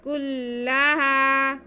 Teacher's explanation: کاف پہ پیش، لام پہ شد، تو کاف کو ہم تھوڑا سختی سے لام کے ساتھ ملائیں گے۔